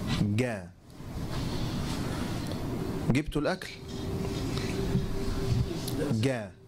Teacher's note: وسنكتبه طب اكتبه أن وسط اللسان فقط هي التي تشترك فنقول ينطق أهل القاهرة الجيم من أقصى اللسان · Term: جيم إيه قاهرية